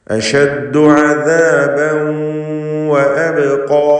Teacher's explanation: ഇദ്ഗാം ബിഗുന്നഹ് നാഖിസ് നൽകി വാവിലേക്ക് തൻവീനിനെ ലയിപ്പിച്ച് മണിക്കണം